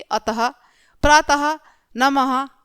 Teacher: विसर्ग का उच्चारण आधे आधे ह के समान होता है, जैसे कि अतः, प्रातः, नमः आदि।